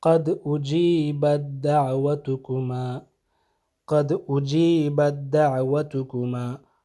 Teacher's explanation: اجیبت میں جو تا ہے یہ ادغام ہو جائے گا دعوتکما کے دال میں، تو یہ آپ نے پڑھتے وقت اس تا کو اجیبت کی جو تا ہے اس کو پڑھنا ہی نہیں، بلکہ اس کا کوئی اثر ہی باقی نہیں رہے گا۔